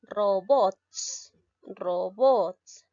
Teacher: La mayor fuerza de voz la tiene la sílaba bots. Por lo tanto, es una palabra aguda.